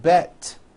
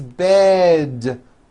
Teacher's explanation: It's not bet with an unvoiced T, it's bed with a voiced D.